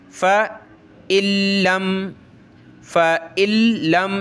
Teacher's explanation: आयत नंबर 24 देखें फ़इल्लम तफ़अलू, ये आपको बताया था ये नून साकिन है, नून के ऊपर ये जज़म आ जाए तो नून साकिन, इसके बाद वाला हरफ जो है उसके ऊपर ये तशदीद आ जाए तो उस नून साकिन को नहीं पढ़ा जाता, वो डिलीट हो जाता है, ख़त्म हो जाता है, ठीक है। लिखाई में नज़र आ रहा है लेकिन पढ़ेंगे नहीं, डायरेक्ट इस हमज़ा को हमने लाम के साथ मिलाना है।